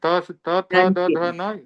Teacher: जीभ जब दांत से टच होती है तब त का उच्चारण होता है।